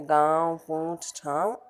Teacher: अनुनासिक, वर्ण के ऊपर लगने वाले चंद्र बिंदु को अनुनासिक कहा जाता है। इसका उच्चारण नाक और मुंह दोनों से होता है